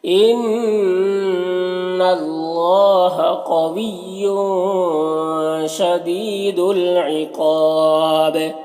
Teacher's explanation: تنوین کے بعد تنوین میں اخفا ہوگا کیونکہ شین حروف اخفا میں سے آ رہا ہے